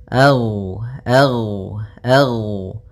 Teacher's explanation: ghain termasuk salah satu sifat huruf yang dia adalah sifat rakhawah yang di mana suaranya mengalir